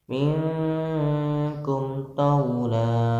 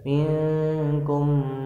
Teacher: Selanjutnya minkum taula tidak boleh minkum, bibirnya harus jelas ya, bibirnya terkatupnya sebentar dan jelas tanpa dengung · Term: idhar syafawi